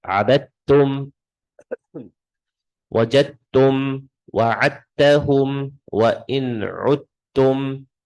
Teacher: Dal has a sukoon, ta has a shadda. I'm not going to read the dal. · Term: idgham